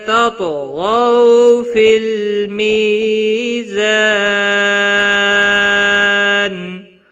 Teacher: طا اور غین دونوں حروف مستعلیہ میں سے ہیں، موٹے پڑے جائیں گے. ز کو تھوڑا سختی کے ساتھ ادا کریں گے.